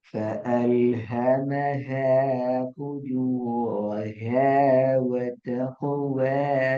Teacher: அந்த ஹ என்கிறது முழுமையாக எங்களோட தொண்டையால காற்று வெளியால வாரது விளங்கணும்